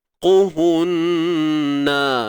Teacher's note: Qaf tebal baris depan ni. Qu tebal selamanya. Huruf ha simpul, jangan dipedih-pedihkan.